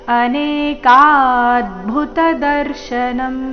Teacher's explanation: ಕ ದೀರ್ಘ ಬಂದು ಅದರ ಮೇಲೆ ಆಘಾತ